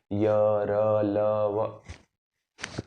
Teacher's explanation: य र ल व पास जरूर आते हैं, कंपन जरूर होता है, लेकिन टच नहीं करते। तो य र ल व जो हैं वो ऐसे हैं जो अंदर से आते हैं, य र ल व, अंदर से इनका उच्चारण होता है, य र ल व। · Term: अंतस्थ